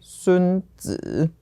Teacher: So if it's a person, it follows an esteemed person title, third tone.